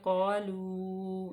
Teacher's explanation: یہاں پہ مد منفصل ہے کیونکہ حمزہ اگلے کلمے میں ہے